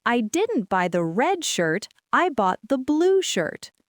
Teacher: The words red and blue are the most important contrasting words. So, those are the words where my pitch will jump the highest.